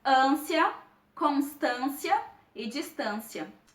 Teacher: Note que a pronúncia dessas palavras não se deu de uma maneira fechada, e sim de uma maneira nasalizada.